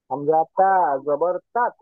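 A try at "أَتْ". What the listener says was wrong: আত। তাত না তো। হামজা জবর কি হয়? তো আয়ের সাথে তা যোগ দিলাম। আত।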